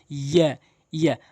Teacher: আর ইয়াটা জিহ্বার মাঝখান উপরের তালু থেকে উচ্চারণ হয়। · এরপর হচ্ছে ইয়া, একটি হরফ দুইটি আকৃতি, এখানে একালিফ টেনে পড়বেন। আর ইয়াটা জিহ্বার মাঝখান উপরে তালু থেকে উচ্চারণ হয় ইয়া।